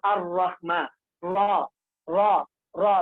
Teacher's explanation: रा का मखरज जुबान का किनारा और कुछ पुश्त जुबान या कुछ जुबान का पुश्त जबकि मिले सना उलिया और रुबाई के मसोड़ों से